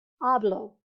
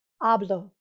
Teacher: the emphasis not the accent mark but just the loudest part of the word is going to be on the second to last syllable